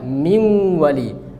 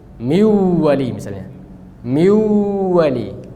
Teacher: Tapi nunnya hilang, sifatnya tinggal. Sifatnya yaitu gunnahnya tinggal. Maka kita baca min wali. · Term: idghamnya nakis